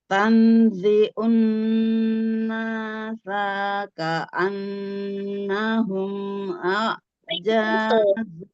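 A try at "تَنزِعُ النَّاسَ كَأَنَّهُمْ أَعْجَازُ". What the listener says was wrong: Coba perhatikan sa-nya itu pendek. Ya, unnasa ka'annahum langsung itu. Tanzi'un nasa ka'annahum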